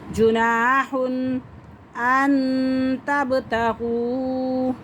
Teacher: لیسا علیکم جناح، ہاں کے اوپر تنوین، تنوین کے فوراً بعد حروف حلقی کا حمزہ آ رہا ہے، تو اس لیے یہاں پہ ہم غنہ نہیں کریں گے۔ جناح ان تبتغوا، ان تبتغوا، واو ساکن سے پہلے پیش آ رہی ہے، تو اسے ہم 1 سے 2 الف کے برابر کھینچ کے پڑھ سکتے ہیں۔